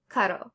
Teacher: R is going to be similar to the English D when it's between vowels